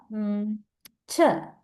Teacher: is a stop plus fricative because it has the qualities of both these types